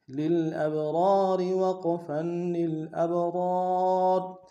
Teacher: وقف صورت میں را کو موٹا کریں گے